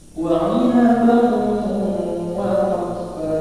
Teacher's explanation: Fathatain bertemu dengan waw itu didengungkan juga, didengungkan. Dia itu hurufnya idgham biguna.